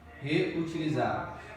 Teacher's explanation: a penúltima sílaba é a tônica. Então é uma paroxítona.